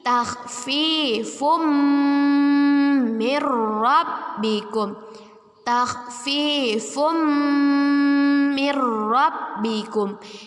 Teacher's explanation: Kita masukkan dengan berdengung dan kita tahan 2 harokat. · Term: idgham bi gunnah